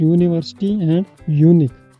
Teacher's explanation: If यू सी here the words यूनिवर्सिटी एंड यूनिक start with ए vowel. However, it does not have a vowel sound but a consonant sound, YU